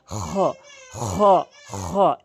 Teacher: খটি হচ্ছে জিহ্বার হলকের শেষ থেকে এভাবে উচ্চারণ করবেন। হলকের শেষ থেকে খ খ খ এভাবে উচ্চারণ করবেন।